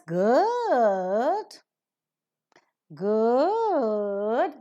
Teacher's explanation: you're falling down and rising up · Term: falling Rising tone